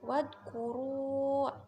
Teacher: Kemudian wadkuru, itu baca ismun fasil karena ada matobi'i bertemu dengan hamzah di lain kalimat, dibaca panjang 3 alif atau 6 harokat